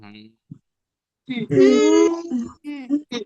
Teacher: আমরা বলি না যে তুমি কি খাবে, আমরা বলি হুম খাবো, এরকম সেই হুম সাউন্ডটা বলো। মুখ বন্ধ থাকবে, নাক দিয়ে সাউন্ড বের হবে। হুম, হুম, হুম বলে সাউন্ডটা ছেড়ে দিবে, বলো। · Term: নেইজাল সাউন্ড